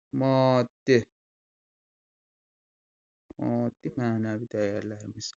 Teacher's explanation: Bura vurğu ikinci hecaya düşür.